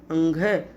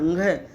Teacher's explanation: नासिका से तो निकल ही रहा और बिल्कुल कंठ से निकल रहा है अंघ, और ईय बोल रहे हैं तो कंठ से जस्ट आगे है तालु, वहाँ से छू रहा है। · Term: नासिक के वर्ण